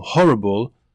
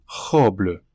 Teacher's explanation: In French, the H is silent, the R would be guttural, and the BLE consonant, which would sound like bull in English, sounds like bleu in French.